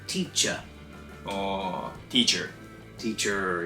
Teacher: if there's an ER you'll tend to hear a schwa sound instead